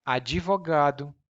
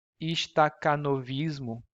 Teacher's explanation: in portuguese we have to include the e an e sound to make it easier for us to pronounce and it's called the e insertion we insert an e or